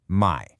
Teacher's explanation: you start low and swing up at the end. Just think of the sound you make when you're caught off guard and say, "Huh?" In Thai, this rising mai acts as a built-in question mark for your sentence. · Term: rising tone